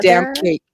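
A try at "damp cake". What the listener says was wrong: it sounds like you're saying that damn cake too. You have to be like damn cake, and then it sounds like it might be molding for some reason because it's damp.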